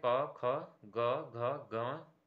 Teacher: क वर्ग को हम कंठ से बोलते हैं